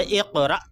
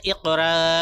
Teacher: اوپر جزم ہے تو یہ کیا حمزہ ساکنہ ہو گیا، اور حمزہ ساکنہ کے پڑھنے میں جھٹکا ہوتا ہے